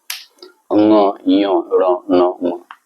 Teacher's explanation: अनुनासिक वर्ण, अनुनासिक वर्ण अर्थात वे वर्ण जिनका उच्चारण नाक की सहायता से किया जाता है